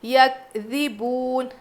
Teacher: کاف پہ جزم ہے، قلقلہ بالکل نہیں کریں گے۔ یکذبون، ذال ہلکا پڑھیں گے، واو مدہ ہے کھینچیں گے، اور نون پہ زبر ہے تو جزم دے کر سانس توڑنا ہے۔ · یکذبون، کاف پہ جزم ہے، قلقلہ بالکل نہیں کریں گے۔ یکذبون، ذال ہلکا پڑھیں گے، واو مدہ ہے کھینچیں گے